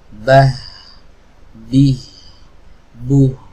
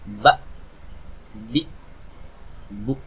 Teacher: ya makanya suaranya tidak berhenti ketika kita sukun Bah Bi buh suaranya tidak berhenti Kenapa karena memang tidak tertutup kita suaranya berbeda dengan Hamzah